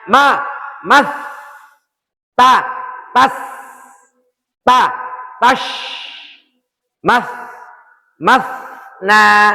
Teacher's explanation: Nah, fahatahu syaksun sakat termasuk huruf itu. Maka ketika ada sukun, sukunnya kita selesaikan desisnya kita sempurnakan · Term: huruf hames